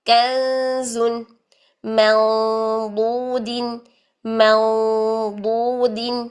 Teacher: ضاد موٹا ہے تو اخفا موٹا ہو گیا